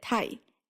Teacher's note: that puff of air you get when you say tai is also significantly reduced